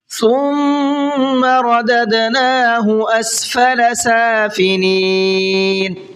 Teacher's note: ثم کے میم میں غنہ کریں گے اس لیے کہ میم کے اوپر تشدید ہے